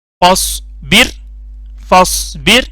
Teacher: را پتلی ہوگی. کیوں؟ را پہ جزم ہے، را ساکن ہے، اس سے پہلے زیر آ گئی